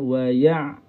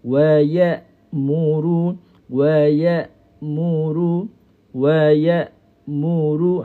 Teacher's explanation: Tengok huruf hamzah. Huruf hamzah ni sifat dia syiddah. Sifat dia syiddah. Syiddah ni maksudnya apa? Suara putus.